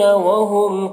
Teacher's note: وہم کے میم میں اظہار شفوی ہو رہا ہے، اسے جلد پڑھنا ہے